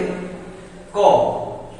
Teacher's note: ক বাতাস বের হচ্ছে না তাহলে ক হচ্ছে অল্প প্রাণ